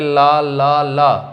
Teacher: जो ला होता है ये भी दंत से ही बोला जाता है, क्योंकि इसे भी बोलेंगे ला। तो ला जब बोलोगे तो जीभ जो है दांतों के पिछले हिस्से पे देखो ऊपर की साइड में स्पर्श कर रही है